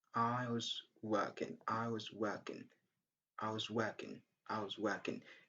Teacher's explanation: Okay, usually was we have a long sound was, where a long sound, but when we're speaking or when we're reading a text, mostly we use the weak form and the weak form have a very short vowel, and the shortest vowel in English is the schwa sound